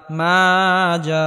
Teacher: পরিমাণ লম্বা করে টেনে পড়তে হবে জিম আলিফ জবর জা মাজা জবরের বাম পাশে খালি আলিফ মাদার হরফ মাদার হরফের উপর মোটা চিহ্ন আসার কারণে চার আলে পরিমাণ লম্বা করে টেনে পড়তে হবে